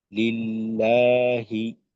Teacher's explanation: আল্লাহ শব্দের তাসদিদের ডানে জের আসছে, আল্লাহ শব্দের লাম পাতলা হবে